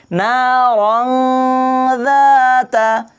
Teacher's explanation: আর ইখফা নাকের নরম জায়গা নিয়ে 1 আলিফ গুন্না করে পড়তে হবে। তো ভালো করে খেয়াল করে দেখবেন, না রং যাতা, না রং, নাকের নরম জায়গা নিয়ে পড়তে হবে, না রং যাতা।